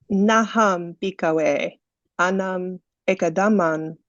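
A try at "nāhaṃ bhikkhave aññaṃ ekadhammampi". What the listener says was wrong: It's anyam. You're making the reverse error that Shalika made. It was uppanna, but Shalika said uppanya, but this genuinely is anya.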